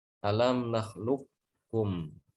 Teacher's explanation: Jadi qafnya seakan-akan hilang. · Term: idgham sempurna